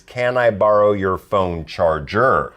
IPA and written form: kæn aɪ ˈbɑːr.oʊ jʊər foʊn ˈtʃɑːr.dʒər (CAN I BORROW YOUR PHONE CHARGER)